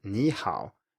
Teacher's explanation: The most basic example of this that I think all of you will have heard about is ni hao, which has two third tones, but if you listen to when I say it, ni hao, these tones are clearly different. The first one is a rising tone, and the second one is either just a low tone or maybe a dipping tone. But the first one cannot be a low tone and cannot be a dipping tone.